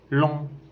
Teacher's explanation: C'est une voyelle postérieure et ouverte, arrondie et nasale. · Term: voyelle nasale